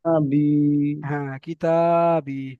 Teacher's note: তারপরে দেখেন বা ইয়াজের বি, এটা হলো ইয়া মাদ্দা, ইয়া সাকিনের ডান দিকে, ইয়া সাকিনের ডান দিকে জের এসেছে, ইয়া মাদ্দা হবে, ইয়া মাদ্দাকে এক আলিফ পরিমাণ টান দিয়ে পড়তে হবে